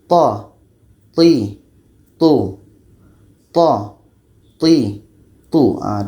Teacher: letaknya pada ujung lidah menempel dengan pangkal gigi seri atas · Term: tho